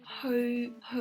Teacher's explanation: ho ho in the midtone so it's hanging in the air again